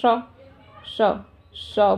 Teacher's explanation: जो ये श सीटी सी बचती है ना, ये तालु से ही तो ऊपर बोली जा रही है · जीभ का बीच का आगे का थोड़ा सा पार्ट लग रहा है, श है ना, श, तो ये तालु हो गई, श तालु।